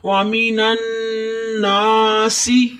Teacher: وَمِنَ النَّاسِ نون مشدد ہے اور نا پہ الف مدہ ہو رہا ہے، الف سے پہلے زبر الف مدہ ہوتا ہے، سین کو سیٹی کی آواز دیں گے